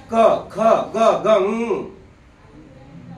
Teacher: ओठ सरळ असं ठेवायचे आणि जीभ अशी पाठीमागं घासते, वरती कंठाला घासते.